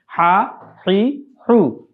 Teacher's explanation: আমরা জানি হা হচ্ছে কণ্ঠনালীর মধ্যখান থেকে উচ্চারিত হয়